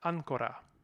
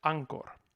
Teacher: So first of all, Latin ancora becomes Old English ancor. So we are losing our final vowel, which is the first notable thing, and we have our stress fixed on the first syllable of the word.